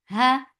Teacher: Ha for fatha open. Just keep ha light. Lafz jalala is heavy, but not ha.